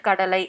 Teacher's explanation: ஐ அப்படின்ற வார்த்தை முழுக்க முழுக்க வராம அதோட ஓசை பார்த்தீங்க அப்படின்னா குறுகி வந்துச்சு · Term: ஐகாரக் குறுக்கம்